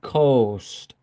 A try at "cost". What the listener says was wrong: All right, now we have to be careful because coast is another word. All right, it's not an O, but it's cost. Cost. Yeah, one sound.